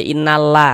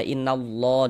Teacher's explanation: Cuman di sini yang kita temui harokat fathah. Maka lafaz Allahnya dibaca tebal, huruf lam jalalahnya dibaca tabkhim. Innallah, jangan dibaca innallah, tapi dibaca innallah, ditebalkan.